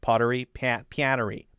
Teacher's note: A long nasally A sound, an A like apple